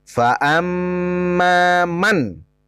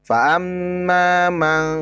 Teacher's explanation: Izhar artinya terang atau jelas. Berarti cara membaca non matinya itu dengan jelas huruf atau bunyi en.